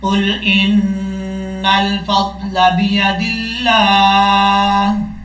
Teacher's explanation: نون کے اوپر شد ہے اس وجہ سے نون پہ غنہ بھی کیا جائے گا. حمزہ نون زیر ان, نون لام زبر نل, ان نل.